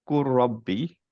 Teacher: নাও কেন আমি বলছি যে ওয়ার্ডের মিনিং জানার জন্য ইটস ইম্পর্ট্যান্ট, বিকজ হচ্ছে যে আমরা যখন শুনবো কুর রব্বি, তখন ইফ উই ডোন্ট নো যে অ্যাকচুয়ালি এটা ইদগাম হয়ে গেছে এবং কুল ছিল অ্যান্ড রব্বি ছিল, দুইটা লাম আর র ইদগাম হয়েছে